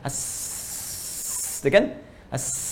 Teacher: Ya, hamas itu lawannya jahar. Ya, jadi nafas tetap mengalir ketika menyebutkan hurufnya, itu hamas.